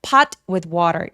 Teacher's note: 시옷받침처럼 소리가 약간 끊어지는 느낌으로